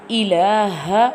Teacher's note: ha pronounced from the bottom part of throat